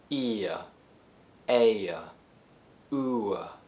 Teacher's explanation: They're called centering diphthongs because they all transition to the central schwa sound, but they all have different starting positions, I, e, and u.